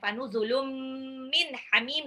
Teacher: Fanuzulum min hamim, nun sukun ketemu ha, izhar.